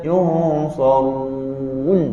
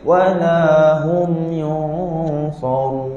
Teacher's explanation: ketika kita masuk huruf nun, kita dah tak dituntut untuk moncong. Kalau kita maintain moncong, bibir kita jadi berat.